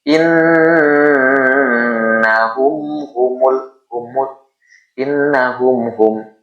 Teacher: Setiap nun dan mim yang bertasdid dibaca gunah. Dengung.